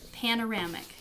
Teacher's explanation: panoramic has four syllables and the third syllable carries the stress